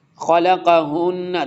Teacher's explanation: دیکھیں نون مشدد ہے، ادغام ہوگا، غنہ بھی ہوگا